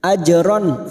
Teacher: namanya bacaan izhar halq jelas atau tenggorokan yaitu huruf Ain ajron fathah tanwin dibaca jelas tanpa mendengung